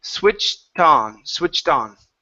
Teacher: we're going to connect that T sound switched to the next word which is on